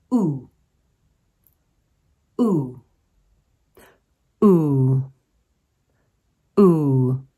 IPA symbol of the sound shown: u: